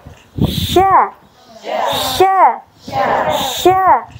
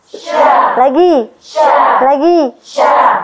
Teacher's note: Karena dia ada tafasyid tidak harus memunyungkan bibir karena dia bukan huruf syafatain. Dia huruf tipis dan huruf yang keluar dari tengah lidah.